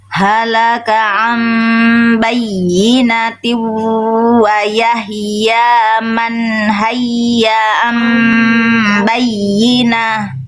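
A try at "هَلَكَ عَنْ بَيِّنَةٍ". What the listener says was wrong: H kecilnya kurang bunyi bunda. Ha nih ada dua ha kecil. Tegaskan lagi bunyi hnya.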